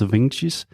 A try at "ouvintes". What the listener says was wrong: Eu escutei ouvintes ao invés de ouvintes. Isso, realmente exagera no ou, então ouvintes, vintes.